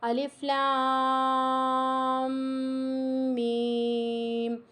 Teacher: لام کھینچ کر میم کے ساتھ ملانا ہے، ساتھ میں غنہ بھی ہو رہا ہے، غنے کو بھی ہمیں کمپلیٹ کرنا ہے۔